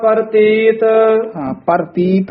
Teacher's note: ਰਾਰਾ ਪੂਰਾ ਬੋਲਣਾ ਪ੍ਰਤੀਤ ਨਹੀਂ ਕਹਿਣਾ